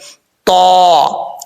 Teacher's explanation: آگے ہے تا حروف مستعلیہ میں سے ہے، پر پڑھا جائے گا۔ اس کا مخرج ہے زبان کی نوک اوپر والے دانتوں کی جڑوں سے لگے اور زبان اوپر کی طرف اٹھے تو تا پڑھا جاتا ہے